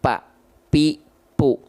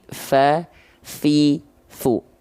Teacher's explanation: Dia nggak akan keluar nafas. Dia nggak akan menghembuskan angin. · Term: huruf P